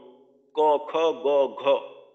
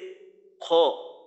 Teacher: উচ্চারণের জন্য আমরা জিহ্বার গোড়ার একটু উপরের অংশ ব্যবহার করি কিন্তু আরবিতে যে খ এই খ টা উচ্চারণের জন্য জিহ্বার গোড়ার ওই অংশ ব্যবহার করা হয় না এর থেকেও নিচের অংশ অর্থাৎ গলার সীমানার একেবারে শেষের অংশটা ব্যবহার করা হয় যেটা কিনা আমরা গড়গড়া করার জন্য যে অংশের ব্যবহারের মাধ্যমে পানি